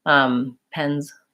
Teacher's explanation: It may sound somewhat devoiced. I start with the Z, pens, and then I end up kind of on an S